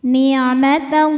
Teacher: Lalu hukum alif lamnya dinamakan dengan alif lam syamsiyah. Karena alif lam menghadapi huruf syamsiyah yaitu lam, maka alif lam ini tidak kita baca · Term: idgham syamsi